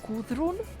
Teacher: it's D but you need to pronounce it with uh your tongue between your teeth